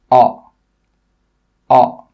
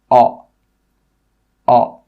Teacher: this sound comes from the very back of your mouth at the bottom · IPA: ɒ